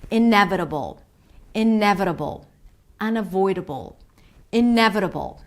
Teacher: imagine as if there is an O sound between the B and the L